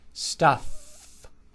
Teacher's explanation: Final sound is f. Bottom lip touching the upper teeth, pushing air out. Stuff. Exaggerate it when you practice it.